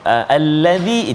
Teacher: allazi itu ringan, tipis, dia tak tebal. Jangan Allahul ladzi, jangan tebal, lembutkan dia.